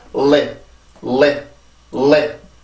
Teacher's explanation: L 발음은 치조 유음입니다. 혀 앞부분을 이용해서 치조를 눌러주고 그러고 나서 혀의 양옆으로 공기가 흘러나가면서 만들어주는 소리예요. 근데 반드시 혀가 이렇게 치조를 눌러야 됩니다.